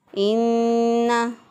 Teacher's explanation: इन्ना, नून मुशद्दद पर हमेशा गुन्ना होता है। एक अलिफ के बराबर गुन्ना की मिक़दार को नाक में ठहरा कर अदा किया।